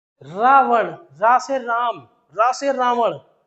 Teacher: रावण का उच्चारण करते ही जबान कांपने लगती है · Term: प्रकंपित